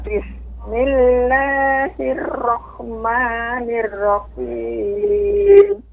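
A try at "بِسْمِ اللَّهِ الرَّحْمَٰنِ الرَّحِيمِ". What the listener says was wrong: Roknya jangan terlampau banyak getarnya, Nek. Jadi Bismillahirrahmanirrahim.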